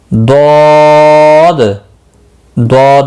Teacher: ضاد بھی مستعلیہ ہے، اس کو بھی پر پڑھنا ہے، 3 سے 5 الف کے برابر اس کو بھی کھینچنا ہے